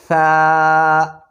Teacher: زبان کو دانتوں پر رکھ کر، دانتوں کے کناروں پر رکھ کر ادا کرتے ہیں · سا ادا کرتے وقت سیٹی کی آواز ہرگز نہیں نکلنی چاہیے